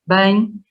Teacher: O adverbial bem, nós dizemos um ditongo, no português europeu é em, sem dúvida, bem. No português brasileiro ou é bem ou é bem, depende das regiões, certo?